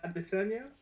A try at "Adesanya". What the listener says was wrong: well, I believe it's Adeshoya. So the S is like as like ish. So Adeshoya, I believe.